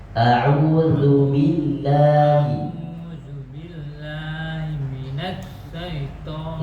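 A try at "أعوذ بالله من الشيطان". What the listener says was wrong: Enggak perlu ditekan Pak. Minus enggak perlu. Minas syaiton.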